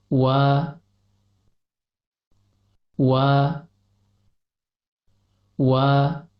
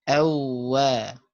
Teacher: tatkala melafazkan huruf waw, kedua bibir tidaklah merapat. Akan tetapi, terdapat rongga antara bibir atas dan bibir bawah. Dan tatkala mengucapkan huruf waw, pangkal lidah naik ke langit-langit atas.